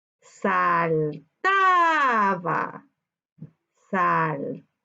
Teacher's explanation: Su sílaba tónica se encuentra en la penúltima sílaba, por tanto es grave.